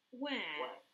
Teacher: Los británicos lo pronuncian muy diferente, como más a la A